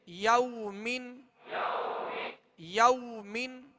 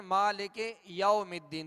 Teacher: اب یو کہتے ہوئے اگر ہونٹوں کو گول نہیں کریں گے، کم گول کریں گے تو یہ مجھول ہو جائے گا